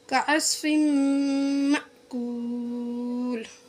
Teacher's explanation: جھٹکے کے ساتھ، حمزہ ساکنہ کو جھٹکے کے ساتھ پڑھا جاتا ہے